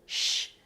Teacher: Y también les dije que aquel tercer sonido que existe en portugués, ese sonido prepalatal fricativo